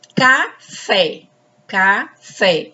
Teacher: A sílaba tônica é fé.